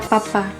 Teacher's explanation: P pada kata Papa suara bibir